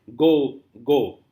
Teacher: Stressed plus stressed. Both the syllables are stressed. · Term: Spondy